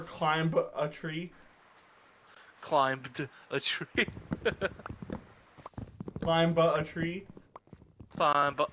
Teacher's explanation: we do say climb. We don't really pronounce the B. I mean, sometimes some people do.